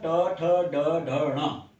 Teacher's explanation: So these sounds are murdhanya. They are retroflex or they are cerebral sounds